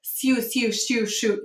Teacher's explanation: If you say sugar over and over, you'll get su, shu. Do you hear that? It begins to assimilate to sh.